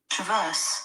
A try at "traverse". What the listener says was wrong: It's not traverse, it's traverse, because the stress is on the verse.